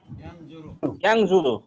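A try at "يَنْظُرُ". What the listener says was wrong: ইয়ানজুরু, মাশাআল্লাহ।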